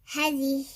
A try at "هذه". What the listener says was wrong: Stretch, yeah? There's an alif here which is supposed to be read even though it's not written, okay?